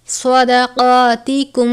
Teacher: صاد کو ہمیشہ پر پڑھتے ہیں، سین کی طرح نہیں پڑھنا.